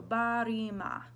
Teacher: Make sure you're flipping that R.